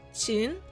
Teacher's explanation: 秦 uses the rising second tone.